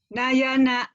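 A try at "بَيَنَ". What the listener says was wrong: salah. Titiknya di bawah, Bu. Titiknya di bawah. Bayana. Bayana. Bayana. Bayana. Bayana gitu, Bu.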